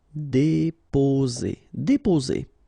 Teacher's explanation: only one S between two vowels, so the sound is Z